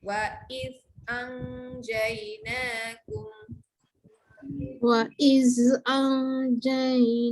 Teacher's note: Wa iz lidah keluarkan, anjay dengungkan, tengah-tengah lidah naik ke atas untuk huruf jim.